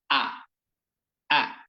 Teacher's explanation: হামজার উচ্চারণ হবে শক্ত, মুখ খুলে আওয়াজ করে সুন্দর করে জোরে সোরে ধমকের সাথে।